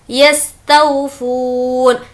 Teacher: तौ को नहीं खींचेंगे क्योंकि ये वावलीन है और फू को खींचेंगे क्योंकि यहाँ पर वाव मद्दा है